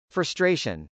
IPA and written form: frəstrˈeɪʃən (frustration)